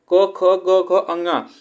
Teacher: यह जो उच्चारण स्थान इसका होता है यह कंठ होता है